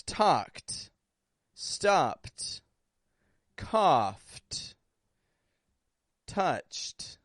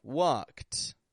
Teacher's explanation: Ed endings come out sounding like a t if the base word has a voiceless ending before that Ed